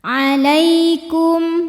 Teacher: ada ya sukun didahului baris fathah, maka dibacanya lembut. · Kum ada hukum izhar syafawi karena mim sukun menghadapi huruf selain mim dan ba, yaitu huruf waw, maka mim sukun dibunyikan dengan jelas. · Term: harfulin